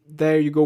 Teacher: E que nesse momento eu acho que ela pronunciou mais como um there you go, como um D mesmo, que é o que muitos brasileiros acabam fazendo, que é pronunciando esse TH no começo como um D